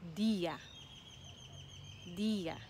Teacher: the emphasis is on the i